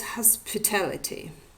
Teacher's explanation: where the first part with a secondary stress, the weaker form, and the second part with a primary stress